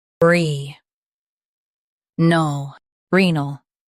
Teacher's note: Stress the re syllable and keep null light.